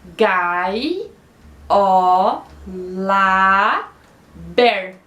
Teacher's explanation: O tá não conta porque o ber é a sílaba tônica.